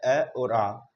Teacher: कंठ से बोला जाता है अ और आ